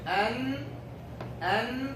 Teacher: you're using all of the front part, touching all of the alveolar ridge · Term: noon